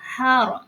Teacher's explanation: Ro-nya ini dibaca tafhim karena sebelumnya ada tanda baca fathah. Kalau sebelumnya tanda baca fathah atau dhammah itu disebut tafhim.